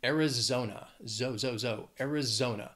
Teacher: it has four syllables the stress is on that third syllable